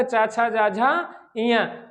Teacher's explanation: चा वर्ग का उच्चारण स्थान आपका तालु होता है